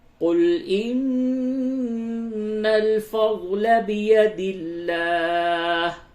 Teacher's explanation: نون مشدد ہے، جگہ پہ غنہ کیجئے